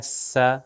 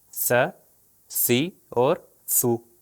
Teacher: تھوڑی سی زبان کو باہر لے کر آؤں اور اوپر اور نیچے والے دانتوں کے درمیان میں لگاؤں تو یہ ہو جائے گا س۔